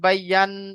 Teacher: নুনের উপরে তাসদিদ আসছে, তাসদিদ আলা অক্ষরকে তো মানে নুন মুস্তাদাত গুন্না ওয়াজিব, এখানে গুন্না করতে হবে। ইয়া হামজার উপরে খাড়া যাবার, তো ইয়ার উপরে খাড়া যাবার, সবটাকে একালে পরিমাণ টান হবে।